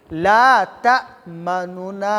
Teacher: اظهار مع روم یعنی د حرکت درېیمه حصه ادا کول